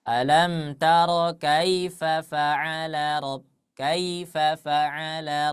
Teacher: ketika kita membaca Lin ah itu kita di sana setidaknya kita baca dua dua harakat